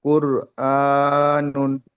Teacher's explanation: র সাকিনের উপরে পেশ আছে, পেশ থাকলে একে পুর করে পড়তে হয়